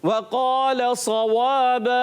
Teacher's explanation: वाव होठों की गोलाई से अदा होगा